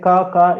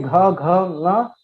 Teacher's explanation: When you say ka, it's just without vibration. But when you say gha, nga, vibration is there.